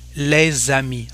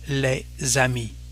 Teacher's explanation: And because here of the vowel there is a connection between the two words, so we'll say les amis, like if it was a Z